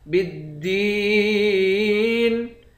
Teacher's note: با کو دال کے ساتھ ملا کر دال کو سختی کے ساتھ جمع کر پڑھیں گے